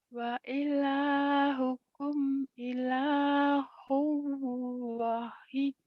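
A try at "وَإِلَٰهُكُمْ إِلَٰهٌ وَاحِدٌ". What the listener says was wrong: wa-nya panjang. Wa ilahukum ilahu wahid. Ayo lagi.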